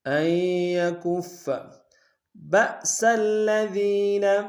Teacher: با میں با کو حمزہ کے سامنے لائیں گے، جھٹکا دیں گے، اور سین کو الذین کے لام کے سامنے لائیں گے، شد ہے، زور دیں گے۔